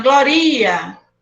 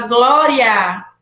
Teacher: É o A que a gente vai pronunciar mais forte.